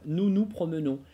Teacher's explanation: Только это «ну-ну» у меня слегка огубленно в силу французского тенденциозного такого произношения.